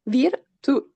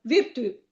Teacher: Virtù e l'accento sulla U. Sulla U, sulla vocale finale. Quindi accento sulla U, virtù. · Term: tronca